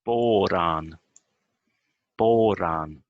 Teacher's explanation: The O becomes longer, and the A also, I think, a little bit longer, and the R becomes shorter, or at least not so stressed.